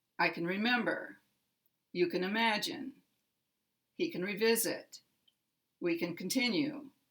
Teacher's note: the middle syllable is the primary stress syllable in the word remember. So it will be the strongest stress in the sentence.